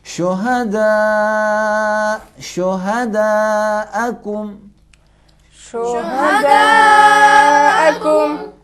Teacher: شہداء، دیکھو 4 انگلیاں جمع ہو گئی، یعنی 2 الف کے مقدار میں. مد متصل ایک ہی کلمے میں مد اور سبب مد آ جائے تو 2 الف کے مقدار میں کھینچنا ضروری ہے